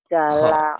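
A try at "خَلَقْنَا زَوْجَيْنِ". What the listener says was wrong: titiknya di atas jalak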